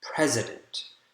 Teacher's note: the first syllable is the strongest and that's why you can see that stress mark there is before the stressed syllable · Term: primary stress